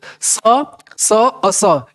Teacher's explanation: स और स, इसमें आपको कंठ ज्यादा वाइब्रेट नहीं कर रहा है